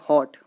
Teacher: इनमें कुछ शब्दों में प्रयुक्त होने वाली ध्वनि हिंदी से भिन्न है। यह ध्वनि आ तथा ओ के बीच की है